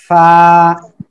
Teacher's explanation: নিচের ঠোঁটের পেট উপরের দুই দাঁতের আগার সঙ্গে লাগিয়া একটু বাতাস বের করতে হবে